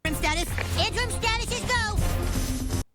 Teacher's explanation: with an A sound and a very soft T